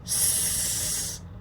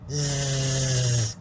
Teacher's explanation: So S first. S, unvoiced. Z, voiced.